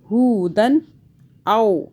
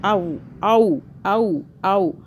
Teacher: اب یہ والا واو جو ہے یہ مدہ نہیں ہو رہی، یعنی کہ ہم اس کو کھینچ نہیں رہے، یہ لین ہو رہا